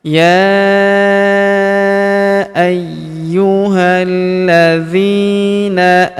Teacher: Huruf zi kita panjangkan 2 harokat karena terdapat ya sukun di depannya.